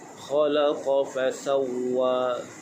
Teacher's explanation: huruf kha makhrajnya di bahagian hujung kerongkong